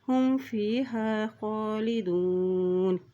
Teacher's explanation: اب یہاں دیکھیں یہاں بھی نون کے پیش شد ہے تو یہاں بھی غنہ ادا کرتے ہوئے پڑھیں گے، اصحاب النار ہم فیہا خالدون، خا کے پر کھڑی زبر ہے، ایک حرکت اس کو لمبا ادا کریں گے